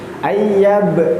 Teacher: jangan lupa ada qalqalah di tengahnya, qalqalah sughra